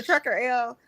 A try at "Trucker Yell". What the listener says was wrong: Trucker Yell, not Trucker L. Trucker Yell. You said Trucker L.